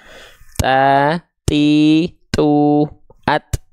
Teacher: huruf ta juga hanya berupa percikan nafas saja